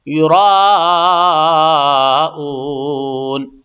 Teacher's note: اون پہ تو مد وقفی ہے، یعنی سانس توڑنے کی وجہ سے مد آئے گا، لیکن یہ را جو ہے یرا یہ ایک دم ضروری ہے، یہ مد کے بغیر کام نہیں چلے گا.